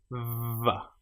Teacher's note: The letter or the sound VV is created with your top teeth on your bottom lip. VV. And you can feel the vibration going on here. · make sure you create that VV vibration with your teeth on your bottom lip